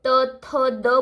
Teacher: जब आप त, थ, द बोलोगे तो आपकी टंग जो है दोनों टीथ के बीच में आ जाएगी।